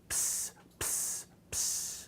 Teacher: This is a combination of your unvoiced P plus sigma. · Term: psi